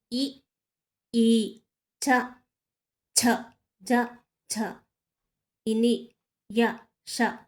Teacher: తాలవ్యములు దవడం నుంచి పుట్టినవి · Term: తాళవ్యములు